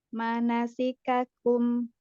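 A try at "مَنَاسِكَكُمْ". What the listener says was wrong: Baik, semuanya pendek ya. Manasikakum. Jangan ada yang dipanjangkan.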